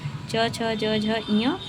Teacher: जो च वर्ग है वह तालु से उच्चारण होता है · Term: तालव्य ध्वनियां, तालव्य ध्वनियाँ